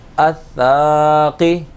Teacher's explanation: سا الف زبر سا میں الف مدہ ہو رہا ہے، اس کو ایک الف کے برابر کھینچ کر پڑھیں گے